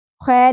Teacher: خیر زبر کے ساتھ یا ساکن حرف لین ہے نرمی سے ادا ہوگا